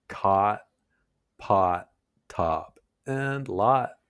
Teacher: Your tongue's low and pulled back in your mouth. It's a deeper and rounded vowel. More like words like cot, pot, top, and lot. · your tongue's pulled back and the sound comes from deeper in your mouth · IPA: /ɑ/